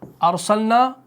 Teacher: را ساکن سے پہلے کیا ہے؟ زبر ہے، مفتوح ہے، تو یہاں پر را کو موٹا کر کے پڑھنا ہے